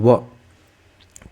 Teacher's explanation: हमारे होठ टकरा रहे एक दूसरे से ठीक है व का उच्चारण करते समय और साथ में हमारी जीभ दांत को भी टच हो रही है